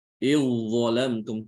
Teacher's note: Jadi seakan-akan zalnya itu hilang. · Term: diidghamkan